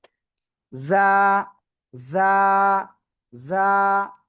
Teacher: ঝিঝি পোকা যেমন আওয়াজ করে সেরকম একটু আওয়াজ হবে